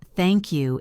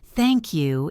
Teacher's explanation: If you say it flat, thank you, it can sound rude or ungrateful. If you say it with a smiling intonation, thank you, it sounds sincere and warm.